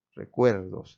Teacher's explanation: es la sílaba del medio es la que tiene mayor fuerza de voz